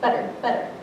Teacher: like an actual T you say better you say the sound where your tongue like hits the roof of your mouth really quickly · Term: flap or a tap sound